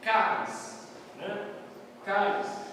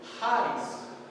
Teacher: o som sai na garganta, então fica áspero